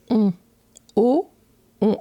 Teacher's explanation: la bouche ne bouge pas. Et c'est juste le son en mettant contre le nez, ça nasalise le o, en fait.